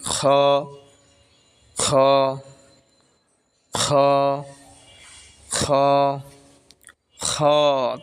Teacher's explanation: খ হলকের শেষ ভাগ হইতে